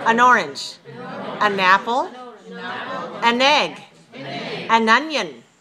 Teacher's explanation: put the n over together with the next word because we have a vowel sound